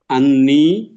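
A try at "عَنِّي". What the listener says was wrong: আন্নি মাত করতে হবে, নাইলে কিন্তু নিজের হবে না, অন্যের হয়ে যাবে তখন। মাত না করলে অন্যের হয়ে যাবে, সাবধান।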